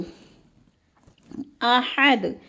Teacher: ہا کو ہم نے حلق کے درمیانے حصے سے نکالنا ہے کیونکہ حروف حلقی والا یہ ہا ہے۔